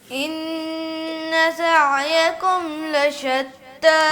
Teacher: سین میں بس شین کی آواز بھی نہ آئے اور ثا کی آواز بھی نہ آئے، خالص سین کی آواز آئے تو سین میں سیٹی کی آواز جو ہے وہ باریک ہو